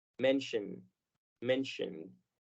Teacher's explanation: la terminación I-O toma el sonido de shua